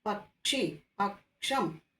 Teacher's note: അപ്പോൾ നമ്മൾ എപ്പോഴും കൂട്ടക്ഷരം എഴുതുമ്പോൾ ആദ്യത്തെ അക്ഷരത്തിന്റെ പകുതി മാത്രമേ ഉച്ചരിക്കാൻ പാടൂ കേട്ടോ. അപ്പോൾ കേവും ഷാവും കൂടെ ചേർന്ന ക്ഷ